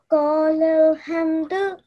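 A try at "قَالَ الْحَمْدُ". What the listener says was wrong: Well done. And this ha is bit thicker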